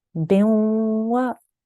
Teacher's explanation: we have here waw mushaddad, and the letter before has a tanween of kasra underneath. So I made a nasal sound.